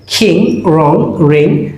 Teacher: অং অং sound মানে অনুস্বারের মতো উচ্চারিত হবে